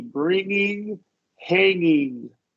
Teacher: words that are originally ending in ing, like right here, bring and hang. Don't release the first G.